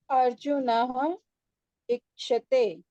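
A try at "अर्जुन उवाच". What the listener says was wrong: Not te. How can it be te?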